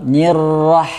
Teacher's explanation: Ini ha sukun. Ini ada sifat hamas ya. Ada sifat hamas, ada udara yang keluar. Nirrah. Suara udara yang keluar dan lebih jernih.